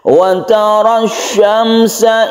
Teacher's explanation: ada al bertemu dengan shin disebut dengan huruf syamsiyah. Kita baca idgham syamsiyah. Idgham artinya masuk ke huruf shin tersebut ditandai dengan tasydid yang ada di sini.